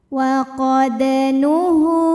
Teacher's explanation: ada huruf qalqalah yaitu huruf dal yang sukunnya ini sukun asli dan ada di tengah bacaan. Maka cara bacanya dipantulkan dengan pantulan yang kecil. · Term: qalqalah sughra